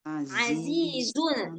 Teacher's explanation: za yang pertama itu ee ujung lidah tapi enggak sampai keluar lidah.